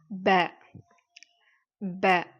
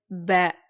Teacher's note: இரண்டு உதடுகள் ஒட்டி ப அப்படின்னு நம்ம வந்து சொல்லணும்